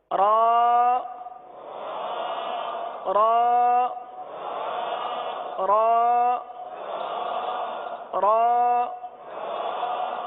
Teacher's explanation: زبان جو ہے یہ دانتوں کی تالو کی جانب والے حصے کی طرف مڑتی ہے اور سیدھی ہوتی ہے، اس طرف جاتی ہے اور سیدھی ہوتی ہے، یہی اس کا مخرج ہے۔